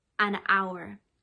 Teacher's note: ah because the beginning of the word is a consonant but you can't hear the consonant you hear the vowel ow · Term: silent h, silent H